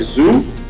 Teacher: Voiced alveolar fricative. Okay, we have z like zoo.